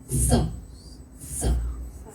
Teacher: એ સ બોલતી વખતે આપણી જે જીભ છે ને એ ઉપરના દાંતને અડકે